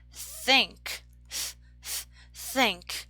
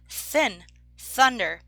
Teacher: this is a voiceless th